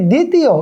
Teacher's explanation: এখানে কিন্তু ব এর উচ্চারণ হয়নি